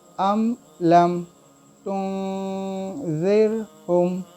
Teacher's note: लम में भी मीम साकिन है, इसके बाद जो आया वो ता है, तो इसलिए इस मीम को भी हम ज़ाहिर करके पढ़ेंगे